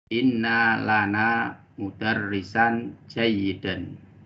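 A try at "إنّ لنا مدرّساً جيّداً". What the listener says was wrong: Na'am, ahsanta.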